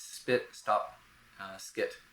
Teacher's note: You can't really put that breathiness into it right after the S because the S is a very energetic and breathy consonant, a lot of breath, airflow. So it's spit, stop, skit, and such. · In these cases, the stop sound after the S is without aspiration. You can't really put that breathiness into it right after the S because the S is a very energetic and breathy consonant, a lot of breath, airflow. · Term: soft P